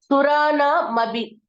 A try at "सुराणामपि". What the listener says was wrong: Mabi, it is not ba, it is pa. Mapi.